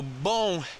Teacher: Remember that the M in the bom we don't pronounce like an M we would in English. It goes into a nasal end.